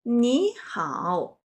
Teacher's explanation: when 2 third-tone characters are arranged together. The first character will be pronounced as the second tone.